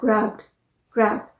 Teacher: जैसे ग्रैब्ड, GRAB, ग्रैब, तो ब साउंड आ रहा है जो कि वॉइस्ड साउंड है, इसीलिए ED जब हमने इसका पास्ट फॉर्म बनाया GRABBED, तो हमने उसे प्रोनाउंस किया ग्रैब्ड